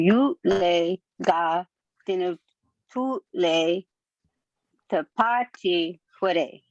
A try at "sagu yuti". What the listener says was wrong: That was really good, except for I think you added on the same. So you said sagu yule. You added on from the dinta tutle. Sagu yuti. Sagu yut.